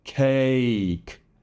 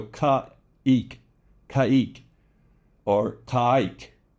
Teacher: It's one continuous sound. It's also long, longer than the a in cat, but both longer than any of your Vietnamese vowel sounds. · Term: glide